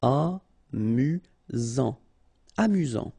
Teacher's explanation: Final T not pronounced. You've got only one S here between the vowels, so it's really this Z sound.